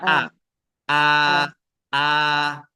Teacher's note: kebanyakan orang salah mengucapkan huruf hamzah ini, dia langsung keluar dari tenggorokan atau keluar dari rongganya